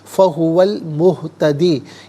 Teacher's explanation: المہتدی، فہوا میں واو پر زبر ہے، اسے المہتدی کی لام ساکن کے ساتھ ملائیں گے. درمیان میں سے الف یعنی حمزہ کو حذف کریں گے. فہو المہتدی، یہاں رکیں گے تو فہو المہتد پڑھیں گے.